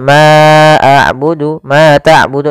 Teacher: Ma abudu Ma tabudu di sini ada bacaan Mad thii yaitu fathah bertemu dengan alif untuk panjang yang kita panjangkan sepanjang dua harakat